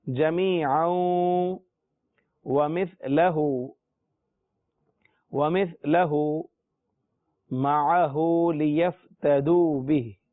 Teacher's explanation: جمیعا، یہ ہے جمیعا، یہ ہے جمیعا، لیکن چونکہ آگے واو مشدد ہے اس لیے ملا کر پڑھیں گے